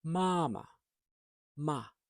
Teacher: a first tone, high tone in ma